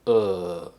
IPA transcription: ɜː